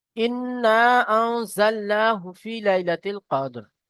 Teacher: হুরুফে মাদ্দার পরে হামজা দ্বিতীয় শব্দের প্রথমে এসেছে, তাই এখানে একে বলা হবে মদ্দে মুনফাসিল। মদ্দে মুনফাসিলকে 2 থেকে 3 আলিফ পরিমাণ টান দিয়ে পড়তে